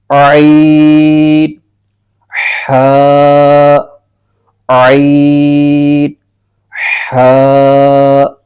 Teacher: یہ دو حروف حلق کے درمیانی حصے سے ادا ہوتے ہیں